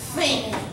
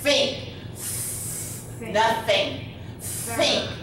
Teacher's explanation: The unvoiced TH is air. It's a puff of air. Think. And it's up at the top, okay?